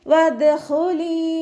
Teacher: ദാല് കൽക്കലയുടെ letter ആയതുകൊണ്ട് full സുക്കൂന് കൊടുക്കുക. ഹ ഇസ്തിഅലാൻ്റെ ലെറ്ററാണ്, തഫ്ഹീം ചെയ്തിട്ട് ഉച്ചരിക്കുക.